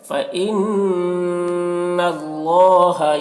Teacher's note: نون مشدد ہے، نون میں غنہ ہوگا اور اللہ کا لام پر ہوگا کیونکہ اللہ کا لام سے پہلے زبر ہے